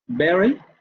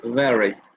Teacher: Oclusiva bilabial sonora, fricativa labiodental sonora.